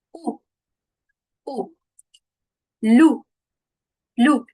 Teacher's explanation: c'est arrondi racine de la langue reculée · on va arrondir et projeter fortement les lèvres en formant un petit canal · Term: le son ou